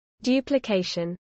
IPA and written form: ˌdʒuːplɪˈkɛɪʃən (duplication)